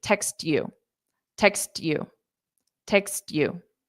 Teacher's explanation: I naturally just pronounce the T very softly · So you just flap your T very, very quickly.